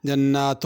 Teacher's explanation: جنات کے نون پہ غنہ ہے